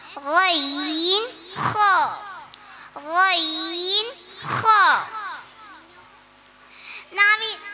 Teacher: തൊണ്ടയുടെ മുകൾ ഭാഗത്ത് നിന്ന് വരുന്ന അക്ഷരങ്ങളാണ്